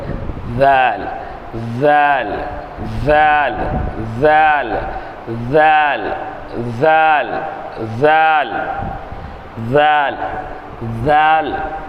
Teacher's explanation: நுனிநாவை மேல்பல் நுனியில் லேசாக சேர்த்து உச்சரிப்பது. இந்த நுனிநாக்க மேல்பல்லினுடைய நுனியில், மேல்பல்லினுடைய நுனியில் லேசாக சேர்த்து செய்கிறது உச்சரிக்க.